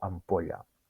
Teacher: és important pronunciar la ella ben palatal, és a dir, no dir ella, no dir llegiu, sinó que dir llegiu, que digueu llegiu.